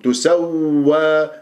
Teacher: النبر في القرآن الواو المشددة والياء المشددة، ولازم نسمع صوت الواوات اثنيناتهم . تسوى، ما أقول تسوى، تسوى أقطع كأنه الصوت، لا، تسوى